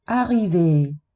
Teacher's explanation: Arrivé. Non può terminare con la E muta, si sente una E accentata.